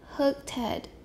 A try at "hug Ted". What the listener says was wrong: Hurt Ted? Ted. That's voice. We need a voice sound. Hug Ted. Make it longer. Hug Ted.